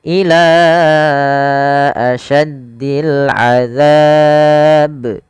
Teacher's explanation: panjangkan lanya sepanjang 4 harakat karena ia ada bacaan mad jaiz munfasil